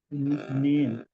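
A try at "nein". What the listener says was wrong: নট নেন বলছি না, ই আই আসলে আই এর মতো উচ্চারণ হবে, এন ই আই, মানে হলো নাই, নাইন, নাইন।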